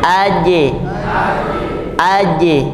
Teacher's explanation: Ya, jadi alhamdulillah sudah tidak terdengar yang hams ya. Jadi huruf jim itu tidak berhembus nafasnya.